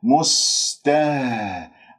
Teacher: سين يجري فيها الصوت، رخاوة يجري فيها النفس، مهموسة من أحرف الصفير